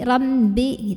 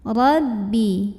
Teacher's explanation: ba tasydid, hati-hati kemasukan bunyi hidung. Jadi rambi gitu.